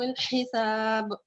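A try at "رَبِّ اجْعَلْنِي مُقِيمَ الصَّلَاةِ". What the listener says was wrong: آپ کا ویسے ٹھیک ہے, مگر وہ جو آخر میں حرکات ہے نا, وہ جہاں چھوٹی ہیں وہ بڑی کر دیں تھوڑی سی. رب جیسے بڑی کو چھوٹا, جیسے کہ رب اجعلنی مقیم الصلاۃ. تی چھوٹا سا ہے نا, یہ آپ نے لمبا کر دیا. ٹھیک ہے, اس کو لمبا نہیں کرنا آپ نے. صلاتی لاتی, ٹھیک ہے, وہ آپ نے چھوٹی کرنی ہے.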